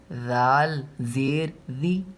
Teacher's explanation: ذال میں زبان کی نوک ہلکی سی باہر نکلے گی